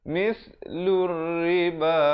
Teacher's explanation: alif lam syamsiah lamnya tidak disebutkan kerana disamarkan